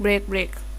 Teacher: स्पॉन्डी में दोनों ही स्ट्रेस होते हैं।